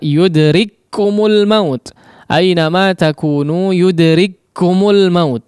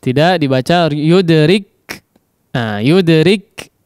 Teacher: Yudrik tidak terjeda dengan beberapa sifat yang dimiliki oleh huruf kaf yang pertama, tapi langsung masuk kepada kum ya.